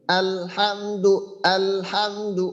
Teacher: এইখানে আমরা লামে থাকা অবস্থাতেই, অর্থাৎ লামের মাখরাজে থাকা অবস্থাতেই আমরা হা ধরবো। যেন এমনটা না হয় আল এই আসলে লাম যদি আমরা ছেড়ে দিয়ে পরে হামদু ধরি, তো এই ক্ষেত্রে যেটা হবে সেটা ওই লামে আমাদের কলকলা মতো হয়ে যাবে।